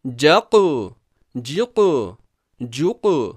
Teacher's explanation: قوف کا مخرج ٹکر کھا کر الگ ہو جاتا ہے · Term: قلقلہ